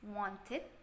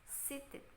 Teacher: the short vowel is inserted between T and D in the pronunciation of the English past tense suffix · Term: insertion